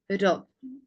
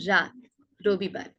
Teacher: র উচ্চারণ করার সময় আমাদের জিভের অগ্রভাগটা সামনের পাটির দাঁতের গোড়ায় স্পর্শ করে উচ্চারিত হবে, র, র। একটু হালকা কম্পন হবে, হ্যাঁ, এটা একটু ভালো করে খেয়াল করবেন।